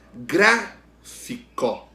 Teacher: Gra é a antepenúltima sílaba, sílaba tônica. Então, a palavra gráfico é proparoxítona.